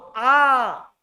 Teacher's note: एक ही ठोस स्वर है जिसमें मुख पूरा खुलेगा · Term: विवृत स्वर